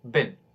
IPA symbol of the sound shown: ɪ